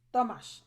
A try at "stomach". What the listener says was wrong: Only it has a K sound on the end, so it's more like stomach. Yeah, it's pronounced like a CH, but you make a K sound. it's stomach instead of stomach.